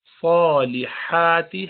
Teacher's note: زی الذین لیجزی الذین آمنوا وعملوا الصالحات. صاد موٹا ہے، اس کو بھاری پڑھیے